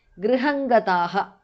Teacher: Anuswara changes to nga there